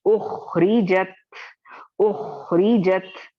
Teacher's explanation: उखरिजत उखरिजत, साकिन को कंट्रोल करना बहुत बहुत जरूरी है, साकिन वाला हर्फ है और यहाँ पे कलकला नहीं करना है, हिलाना नहीं है साकिन वाले लेटर को, लेकिन तफखीम के सेकेंड लेवल पर पढ़ना है।